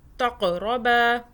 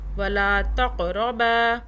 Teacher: قاف پہ قلقلہ ہے، جھٹکے سے پڑھیں